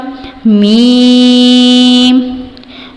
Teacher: دونوں ہونٹوں سے یہ لفظ ادا ہوگا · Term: حروف شفویہ